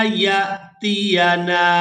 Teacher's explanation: हत्ता यातियाना, यहाँ पर जो आप लोग अलिफ के ऊपर हरकत देख रहे हैं, ये अलिफ जो है ये हमजा के अंदर बदल गया है। अब यहाँ पर या को हमजा साकिन के साथ मिलाएंगे तो झटके के साथ अदा करेंगे। · ता को खड़ी ज़बर की वजह से खींचकर अदा करेंगे।